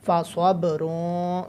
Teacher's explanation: صب باب حروف قلقلہ والا ہے تو یہاں پر قلقلہ کرنا ہے